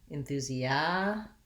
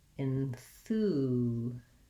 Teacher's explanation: Enthusiastic has stress on the second to last syllable. Enthusiasm has second syllable stress, so it changes. Other than that, the sounds are mainly the same.